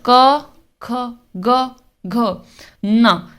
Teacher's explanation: ये कहां से बोला जा रहा है कंठ यानी कि गले से बोला जा रहा है